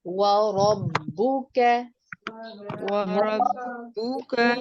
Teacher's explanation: इस लफ्ज के अंदर रॉ को छोड़कर बाकी तमाम हुरूफ बारीक पढ़े जाएंगे। रॉ को आप पुर करके पढ़ेंगे।